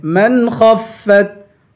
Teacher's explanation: من پہ غنہ نہیں کریں گے، خا کو پر پڑھیں گے